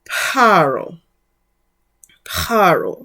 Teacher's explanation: So even in Greek, originally, the PH would have been written but not pronounced with the sound of an F. So though you may see Pharaoh written in this way, it would have been Paro. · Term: aspirated